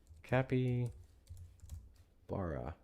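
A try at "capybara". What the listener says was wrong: Kappa. Kappa. Not capi. Kappa.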